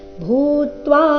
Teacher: ಎರಡು ದೀರ್ಘ ಭೂ ಮಹಾಪ್ರಾಣ ದೀರ್ಘ